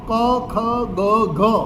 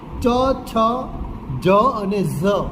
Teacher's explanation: જે કંઠ્ય છે ઉચ્ચારણો ક, ખ, ગ, ઘ, એ કંઠ્યની જગ્યાએ તાલવ્યનો ઉપયોગ થાય છે. ચ, છ, જ અને ઝ.